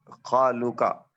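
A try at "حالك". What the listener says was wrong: हालुका, हा है वो।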